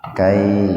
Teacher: madlain atau haraf lin dibaca panjang walaupun tidak sepanjang mad tabi'i atau tidak sepanjang mad lain ketika jatuh pada waqaf.